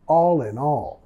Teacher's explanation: No decimos con una pausa entre las palabras, all in all, más all in all. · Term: vinculación